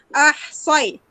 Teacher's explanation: Soy tu muncungkan mulut untuk tebalkan bunyi sod.